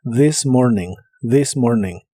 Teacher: La TH de this se pronuncia como una D vibrante.